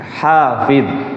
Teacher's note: Jangan ikut-ikutkan qalqalah karena ini bukan qalqalah. Ya, tidak memantun.